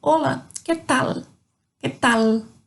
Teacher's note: A língua termina lá no céu da boca. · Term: som propriamente do L